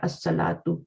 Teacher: اچھا الصلاۃ میں بھی لام پڑھا جا رہا ہے، صاد آپ کا نہیں، اس میں نہیں پڑھا جا رہا، اس میں الصلاۃ آپ کا لام اسکپ ہو رہا ہے اور صاد جو ہے وہ آپ کا شمسی لیٹر ہے.